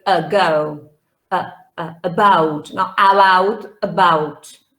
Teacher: this is the most common vowel sound in english the schwa